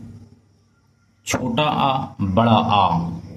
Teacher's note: इनका उच्चारण स्थान कंठ है, यानी गले से है।